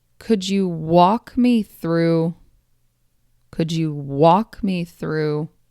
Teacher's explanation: Let's take a look at the stress pattern. The stress builds up and lands right on that main verb.